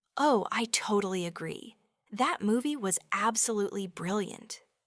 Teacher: Did you notice how totally agree carries a strong emphasis? Almost a burst of energy and absolutely brilliant is delivered with such a strong positive almost soaring intonation.